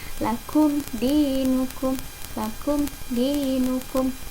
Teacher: mimnya jelas, tidak boleh disamar-samarkan atau didengungkan. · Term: izhar syafawi